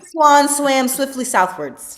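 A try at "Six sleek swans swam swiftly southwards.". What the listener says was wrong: Not so bad. Not so bad.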